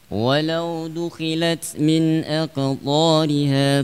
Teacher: kha dan ghain dalam keadaan kasrah itu memiliki hukum ya yang sangat lemah sekali di dalam tafkhim. Tafkhim yang sangat lemah.